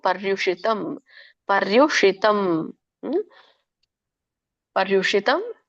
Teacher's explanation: ಷ ಮೇಲೆ ಬರಬೇಕು ನಮ್ಮ ನಾಲಿಗೆ ರೂಲ್ ಆಗಬೇಕು